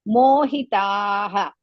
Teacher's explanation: ಮೋ ದೀರ್ಘ ಹಿ ರಸ್ವ ತಾ ದೀರ್ಘ